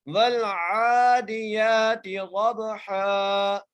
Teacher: عین کو ایک الف کی مقدار کھینچ کے پڑھ رہے ہیں۔ یہاں پر بڑی احتیاط کرنی ہے، یہاں پر اکثر اوقات پڑھتے ہوئے لوگ عین کی جگہ حمزہ پڑھ دیتے ہیں، لہٰذا یہاں پر عین ہے تو عین ہی ادا ہوگا۔